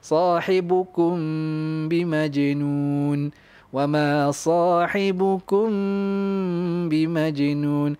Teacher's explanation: Makhraj mim pada syafatan lah, pada bibir. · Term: ikhfa syafawi